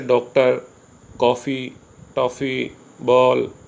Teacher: इस प्रकार के जो शब्द हैं ये न तो स्पष्ट आ है और न स्पष्ट ओ है, दोनों के बीच की ध्वनि है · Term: आगत ध्वनि